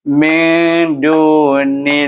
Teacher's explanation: Maka kita kena baca dia dengan idgham samsi, masukkan nim kepada nun ini kepada huruf lam, iaitu baris bawah ni dengan lam dengan jalalah yang nipis bacaannya. Min dunillahi, nipis lam dia, tapi tetap dua harakah pada nama Allah.